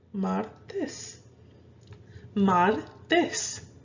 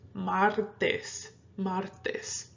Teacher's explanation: See how I'm stressing it more on the mar.